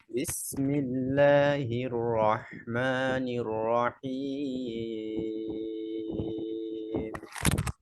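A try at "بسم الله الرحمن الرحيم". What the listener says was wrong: রটা আরেকটু প্রেসার দিয়ে ধরবেন, শক্ত করে ধরবেন, হ্যাঁ। বিসমিল্লাহির রহমানির রহিম। নির আর নূর।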